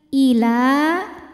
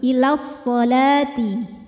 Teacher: Ila, jika berhenti di la, maka ini dibaca panjang 2 harokat karena hukumnya adalah mad tabi'i. Sebabnya ada alif yang didahului harokat fathah.